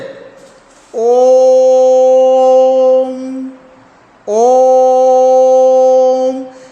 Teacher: इस स्वर का उच्चारण हम यानी द्वय मात्रिक से अधिक यानी तिगुना समय लगता है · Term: प्लुत स्वर